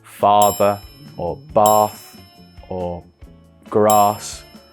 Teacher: we want to make sure our mouth is feels wide we flatten our tongue and we almost say like ah like you're going to the dentist